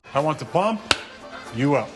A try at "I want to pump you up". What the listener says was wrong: You put the emphasis on the wrong syllable.